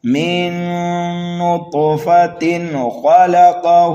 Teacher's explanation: اس طرح سے، تو یہاں پر وقف بالابدال ہوگا۔ اور اگر ملا کر کے پڑھنے لگے تو پھر جو ہے اظہار حلقی ہوگا، اس لیے کہ تنوین کے بعد خا حروف حلقی میں سے آ رہا ہے